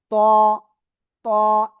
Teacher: জিহ্বার আগা উপরে দুই দাঁতের গোড়ায় লাগান, লাগিয়ে এবার আওয়াজটা হবে মোটা আওয়াজ।